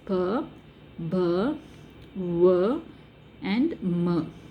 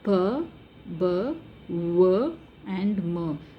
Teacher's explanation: So these four are bilabial consonants. So when you check while pronouncing the sounds p, b, w or m, you will find that both the lips are involved.